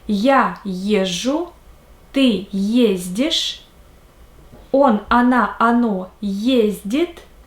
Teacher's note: The stress is always on the first syllable